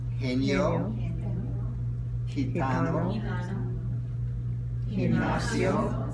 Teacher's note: All right, the G. Before the E and I, it sounds like an H.